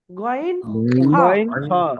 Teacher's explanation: গন খ কি আছে গন >> আচ্ছা কেমন করে উচ্চারণ হয় কন্ঠনালীর মুখের দিকের অংশ হতে উচ্চারিত হয়